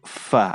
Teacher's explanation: gigi atas itu bertemu dengan bibir bagian bawah ya kemudian disertai dengan Hames hembusan udara